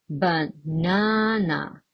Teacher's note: It falls on the second syllable.